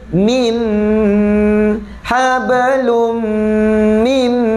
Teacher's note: Huruf mim. Oleh kerana huruf mim sifatnya tutup mulut, dengung itu dalam keadaan tutup mulut.